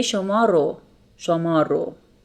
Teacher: You see that re comes after a vowel like in شما. So we don't omit re sound and we say شما رو.